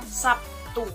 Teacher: kata Sabtu dalam bahasa Indonesia sering diucapkan Sabtu, di mana terlihat bunyi B berubah menjadi P. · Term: asimilasi